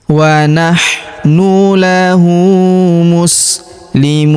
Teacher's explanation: Huruf mu kita panjangkan 2, 4 atau 6 harokat karena di depan huruf mu terdapat waw sukun sebelum huruf pemberhentian, dan huruf pemberhentian huruf na kita sukunkan atau kita matikan.